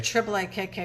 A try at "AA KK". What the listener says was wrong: No. You don't say triple A. You say the AAs.